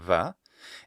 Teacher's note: B lenited to something more like a fricative like a va and then even perhaps become an approximate va or even w such that when the person was writing moosh, they knew that the letter B between vowels is a W and then they would write it in exactly that manner.